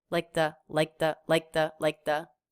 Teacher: she kind of makes a stop for a k but she certainly doesn't release it